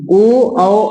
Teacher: बोलते हैं अब देखिए ओ औ और औ ओष और कंठ हवा कंठ से भी टकरा रहा है और ओष्ठ के भी ओठ का भी इसमें सहायता है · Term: उष्ट कंठ